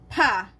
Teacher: The P with hangin. Aspirated consonant.